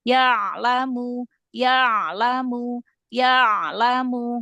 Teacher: Huruf ain yang dialirkan bukan ya-nya yang dialirkan ya.